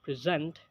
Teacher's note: first syllable in the word present when it's a noun and a stress on the second syllable in the same word present when it's a verb